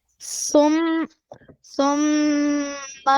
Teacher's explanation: You close your lips for 2 seconds in the case of meme. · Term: gunna